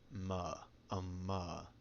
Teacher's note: M is simple and tends to make a voiced bilabial nasal